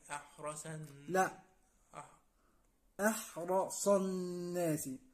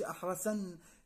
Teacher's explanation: الصاد مفخمة مفتوحة، الدرجة الثانية أو المرتبة الثانية من التفخيم. أحرصن، ما أقولش أحرسن، يبقى أنا قلبتها لسي، ما ينفعش.